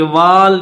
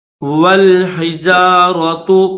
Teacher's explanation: واو کو لام کے ساتھ ملائیں گے، واو کے بعد یہ الف خالی ہے، اس الف کو نہیں پڑھیں گے